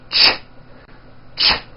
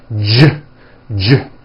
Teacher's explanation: if you take this CH sound and you keep everything in your mouth the same, you just add voicing, it becomes an American J sound. J, j. CH, ch, unvoiced, J voiced.